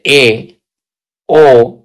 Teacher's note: वे स्वर जिनके उच्चारण में मुख संवरत की अपेक्षा कुछ अधिक खुलता है। पहले से कुछ अधिक खुलता है। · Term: अर्ध स्वर संवरत